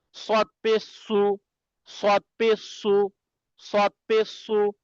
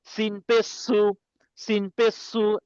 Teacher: সদ পেশ কি একটু মুখ গুল করে, একটু মুখটা গোল করে একটু বাঁশির মতো আওয়াজ হবে। ঠিক আছে, কেমন বাঁশি, শো শো করে যেটা হয়, এমন না।